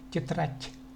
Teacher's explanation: Хоть и в русском языке по-русски мы пишем д, но тем не менее произносится т